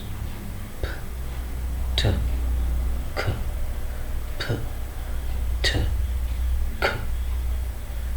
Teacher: the strong puff of air is released these sounds however are aspirated only when they occur at the · Place a finger in front of the lips and start pronouncing these three plosives, subplosive sounds: p, t, k, p, t, k. A strong puff of air is released.